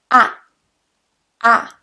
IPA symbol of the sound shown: æ